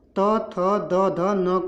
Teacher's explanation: जब आप त थ द ध न का उच्चारण करेंगे तो आप देखेंगे कि आपका जो दंत और जीभ आपस में टकराते हैं, इसलिए इनको दंत से, इनका उच्चारण स्थान दंत माना गया है।